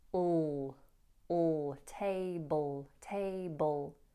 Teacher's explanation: The L here is a dark L, all, table, table. So you want to make the sound resonate further back in your mouth so that it creates a darker sound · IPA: /ˈteɪbəl/